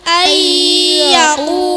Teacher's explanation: Cara membacanya, nun mati dan tanwin dimasukkan ke huruf yang kedua dengan disertai dengung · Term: Idgham biguna